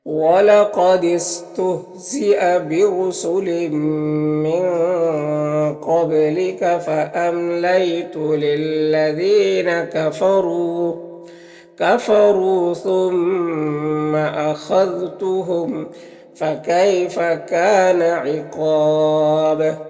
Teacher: وقف کی صورت میں مد عارض وقفی ہوگا اور با میں قلقلہ ہوگا